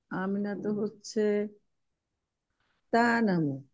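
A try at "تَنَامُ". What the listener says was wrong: টান হবে না, নাতে টান হবে। তানামু।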